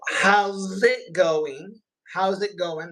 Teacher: Remember, the G is dropped. The G is dropped